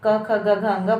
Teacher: इसमें एक चीज नई है कि जैसे क वर्ग में क, ख, ग, घ, अंग, इनका उच्चारण स्थान कंठ है। जब आप क, ख, ग, घ, अंग बोलेंगे तो जो इसका उच्चारण स्थान है वो कंठ से, यानी कि हमारे गले से इसकी ध्वनि आ रही है।